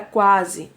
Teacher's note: A letra U é uma semivogal e a letra A é uma vogal. E ele é um ditongo crescente oral, porque o A sai apenas pela boca.